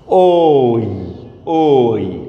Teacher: উচ্চারণে অ plus ই আসতেছে, এই জন্য এটা যুক্ত, এটা মৌলিক নয় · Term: যৌগিক স্বরবর্ণ